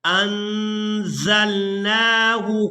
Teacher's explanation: زا کو جب بھی ادا کرتے ہیں تو سیٹی کی مثل آواز پیدا ہوتی ہے،